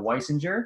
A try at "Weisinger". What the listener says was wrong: Weisinger. It's a hard G.